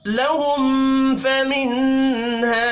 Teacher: میم ساکن کے بعد فا ہے، اظہار شفی ہوگا، غنہ نہیں ہوگا